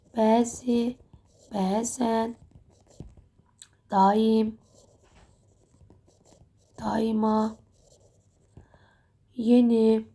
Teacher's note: bu tipli sözlərdə uzun tələffüz də, vurğu da bizim birinci hecamızdadır